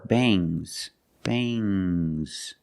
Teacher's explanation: it makes the nasal sound but it also makes a little G sound, but not a hard, strong G.